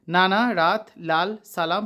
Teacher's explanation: যেসব ব্যঞ্জন ধ্বনি উচ্চারণের সময় জীভের ডগা উপরের পাটির দাঁতের গোড়ার সঙ্গে লেগে বায়ুপথে বাধা সৃষ্টি করে সেগুলোকে দন্তমূলীয় ব্যঞ্জন বলে